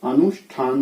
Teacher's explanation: थ है वो ठ में बदलता है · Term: मूर्धन्यीकरण ठ